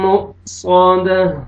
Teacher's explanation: حمزہ ساکن جھٹکے سے پڑھیں گے, واو نہیں پڑھیں گے. جب بھی حمزہ کو مر سکون آئے گا, حمزہ ساکن ہوئے گا تو جھٹکے سے پڑھیں گے.